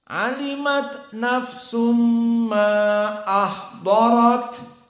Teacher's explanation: maka kebanyakan mereka mentaksir dari Mad Jaiz munfasil jadi dibaca Dua harakat saja